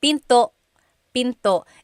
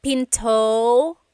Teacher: Don't forget to stop the sound at the end. That's called a glottal stop.